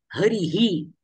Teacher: विसर्गाचे उच्चारण ह सारखं करायचं आहे आणि त्या ह मध्ये विसर्गाच्या मागे जो स्वर असेल तो स्वर ह मध्ये मिसळून ऍड करून विसर्गाचे उच्चारण करायचं आहे